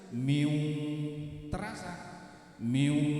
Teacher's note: Jadi miu itu kalau dipegang hidungnya itu bergetar ya, karena suaranya lewat situ.